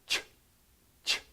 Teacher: when you don't vocalize, you get ch, ch. You're doing the same mouth movement, same muscles being used. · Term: the CH sound